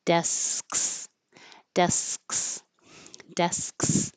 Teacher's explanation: So you stop the airflow with the K, and then when you bring it down, k, you're already ready for the S. SKS. Desks.